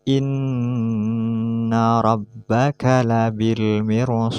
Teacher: Ini harus dibaca tafkhim atau tebal karena ro mati didahului harokat kasroh dan setelahnya terdapat huruf isti'ala yang tidak dikasrohkan.